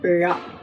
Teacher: நாக்கை உள்ளே மடித்து மேலெண்ணத்தை தடவி வரும்போது அந்த நா வரும் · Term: ழகரம்